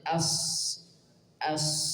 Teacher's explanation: tapi kalau kita baca huruf sad as as mengalir dulu ada tempo di situ maka tidak dibaca asr tapi dibaca Asir dulu itu yang perlu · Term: sifat rakhaah